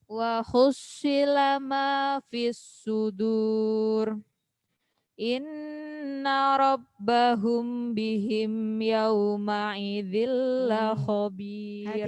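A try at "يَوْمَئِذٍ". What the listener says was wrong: Hati-hati. I. Hamzah bukan ain. Tertukar.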